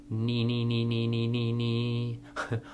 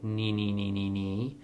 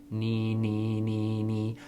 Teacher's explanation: And notice when you say nee nee nee nee nee, your tongue goes quite high in your mouth and just works at the tip. And the tip of your tongue goes up to the roof of your mouth and releases with every n